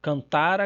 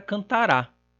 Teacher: a diferença entre pretérito mais que perfeito e futuro do presente, no caso da terceira pessoa, se dá apenas pela oposição entre paroxítona e oxítona